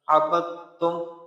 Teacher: با کو ڈائریکٹ تا کے ساتھ ملائیں گے، عبدتم اس طرح۔